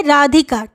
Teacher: पहला और अंतिम वर्ण गुरु हुआ, बीच का वर्ण लघु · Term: रगण